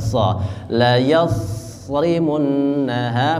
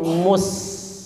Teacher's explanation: So itu dia tebal, pangkal lidah naik ke atas, menekan ke atas sehingga terdengar tebal.